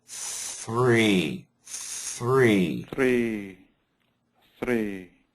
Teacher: keep the th long and then the tongue goes down for the r